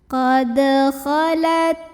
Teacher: dalnya ini dipantulkan dengan pantulan yang kecil dan tetap dialirkan. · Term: qalqalah sughra